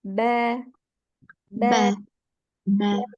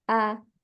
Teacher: Kemudian huruf ba yaitu bertemunya kedua bibir dalam keadaan tertutup. Huruf ba itu tertutup.